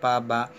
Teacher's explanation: ತುಟಿಗಳ ಸಹಾಯದಿಂದ ಉಚ್ಚರಿಸಬೇಕು ಅದು ಪ ಬ, ಇದನ್ನು ಓಷ್ಠಿ ಅಂತ ಕರಿತೇವೆ